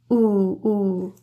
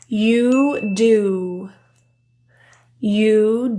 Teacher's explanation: the jaw is apart ooh ooh when looking at the tongue the back of the tongue is really high in the mouth · the oo sound, that tongue position is really high in the mouth and further back. The jaw is apart. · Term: the ooh sound